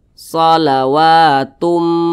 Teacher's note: bhunah nah cara bacanya itu dimasukkan kemudian juga dia didengungkan jadi bunyi tanwin ini dimasukkan ke huruf mim jadi dibaca shawatum jangan dibaca Tun tapi dibaca Tum dimasukkan ke